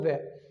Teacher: जब आप व बोलोगे तो आपके जो ऊपर दांत होते हुए वो आपके नीचे के होट पर टच करेंगे